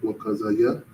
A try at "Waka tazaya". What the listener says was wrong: You don't just say za. There's a letter that says za. That's a taza.